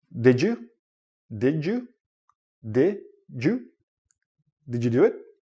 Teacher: when you're connecting words and you have a d and a y together it becomes like a j sound